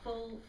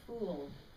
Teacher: And oo is so much more, it's tenser, the lips are rounder